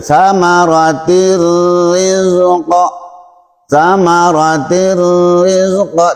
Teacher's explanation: Tidak dibaca samaratin rizqa lagi, tapi menjadi samaratir rizqa. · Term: idgham